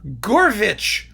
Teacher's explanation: if I travel to Russia, where they don't have aspirated H's, my name becomes Gorvich